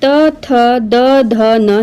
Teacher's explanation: दांत और जीभ के स्पर्श से बोले जाने वाले वर्ण को दंत्य वर्ण कहते हैं। इसके अंतर्गत त, थ, द, ध, न यह सभी दंत्य वर्ण है।